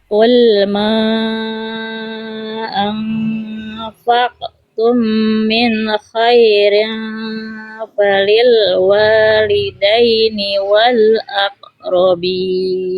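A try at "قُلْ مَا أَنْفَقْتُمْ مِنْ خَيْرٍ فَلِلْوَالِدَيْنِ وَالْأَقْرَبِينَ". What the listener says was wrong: Oke, mana bunyi kolkolahnya hilang bunda semuanya? Ulang. Hilang semua, qaf sukunnya dipantulkan, ya.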